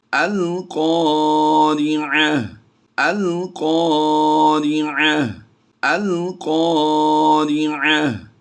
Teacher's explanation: ایک تو گول تا کو وقف میں ہا ساکن سے بدلیں گے